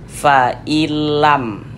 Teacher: Huruf nunnya masuk, melebur ke huruf lam ini, fa'ilam. Kemudian tidak didengungkan, tidak digunnahkan, sehingganya dibaca pendek saja, fa'ilam, fa'ilam. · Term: idgham bila gunnah